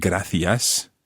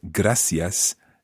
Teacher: the use of the s sound, rather than the th sound. For example, with gracias in most of mainland Spain, and gracias in Canarias.